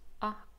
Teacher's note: there's a clear glottal stop which makes the second vowel sound quite sharp and distinct